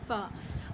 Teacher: सनाया उलिया के किनारे और निचले होंठ के अंदरूनी हिस्से के मिलने से अदा होता है